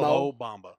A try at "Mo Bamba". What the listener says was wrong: Like separately, though. Not like meshed together as one word.